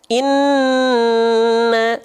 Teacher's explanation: mim bertasydid nih ini baru dia ditahan 2 harokat karena gunnah.